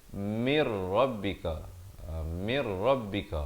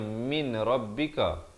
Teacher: Dan kemudian mir rabbika tar, mir di sini idgham bila gunnah. Asalnya min rabbika, tapi di sini kena baca mir rabbika ya, bukan min rabbika.